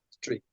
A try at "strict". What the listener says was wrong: And then you just want to add a little T sound at the end of that. Remember, it's strict, and then you want to add that little T sound with the air coming out.